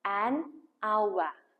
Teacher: Қараңыз, мысалы, ауа деген сөзде бізде бірінші дыбыс H әріпі дыбысы тұр, бірақ ол дыбыс бізде silent, яғни дыбысталмайды. Яғни ауа дегенде ау деген дыбыстан басталып дыбысталып тұр, ал ау деген дыбыс бізде дауысты.